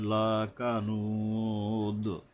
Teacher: দালের উপরে কলকলা করতে হবে